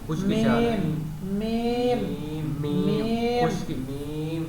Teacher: میم جو ہے، میم ہونٹوں کی خشکی کی جگہ سے ادا ہوتا ہے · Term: شفوی